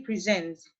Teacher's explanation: when we say present, the stress is on the first syllable, making it a noun.